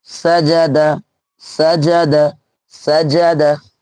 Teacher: জবারকে তাড়াতাড়ি পড়তে হবে কেউ টান হবে না